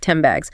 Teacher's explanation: The N sound made with the tongue near the front changes to an M sound made with the lips because the next sound the is also made of the lips. · This is when a sound changes to become more like a neighboring sound, makes the transition smoother for the speaker, like 10 bags, say it quickly, often sound like 10 bags. The N sound, made with the tongue near the front, changes to an M sound